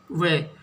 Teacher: अब ऐसा कौन सा शब्द है जिससे ध्वनि दांत और होठ दंतोष्टो यानी दांत और होठ दोनों से मिलकर आती है